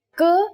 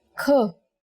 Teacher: k is a consonant, and when we say it with aspiration, it becomes another consonant kh.